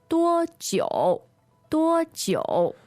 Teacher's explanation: So that's DUO first tone, JIU third tone.